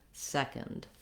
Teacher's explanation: like we basically have no vowel in the second syllable so this letter o is going to be either a schwa or almost no vowel at all go right from the k to the nd second and stretch